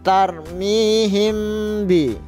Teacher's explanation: Nah, ini mim mati bertemu dengan ba, dibaca samar gitu.